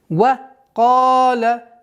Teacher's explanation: Долгота в размере двух огласовок удлиняем фатху.